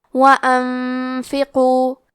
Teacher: حرف القاف کی ادائیگی زبان کے جڑ اور تالو کے نرم حصے سے ہے، قاف حروف التفخیم میں سے ہے، تو ہم یہ حرف کو موٹی آواز میں پڑھیں گے۔